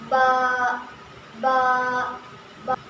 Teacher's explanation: बा कैसे निकलता है? दोनों होंठ मिलकर। मेरे होठों को देखिए।